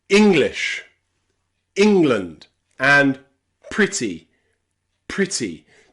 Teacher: In some words where you stress that E, we pronounce it as the short I sound.